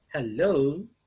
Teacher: hello begins with a high range and ends with the low range low pitch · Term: pitch range